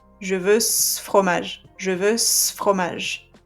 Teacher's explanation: I'm going to just keep the s sound of ce, and I'm going to put it right at the end of the previous word